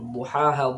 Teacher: Duhaha, dad ini tempat keluarnya. Cara yang paling mudah pengucapan dad itu di tepi lidah sebelah kiri dengan geraham atas sisi kiri.